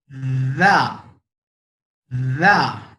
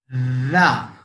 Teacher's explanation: जब आप रा वाला साउंड निकाल रहे हो और दांत से प्रेस कर रहे, तो टिप ऑफ द टंग पे वाइब्रेशन होगा